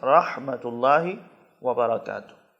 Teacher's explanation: ورحمۃ اللہ میں ہا ہے حلق کے درمیان سے